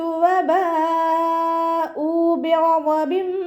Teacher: മദ്ദക്ഷരത്തിന് ശേഷം അതേ വേർഡിൽ തന്നെ ഹംസയും വന്നു. മദ് വാജിബ് മുത്തസിൽ 4 5 കൗണ്ട് നിർബന്ധമായിട്ട് നീട്ടി കൊടുക്കുക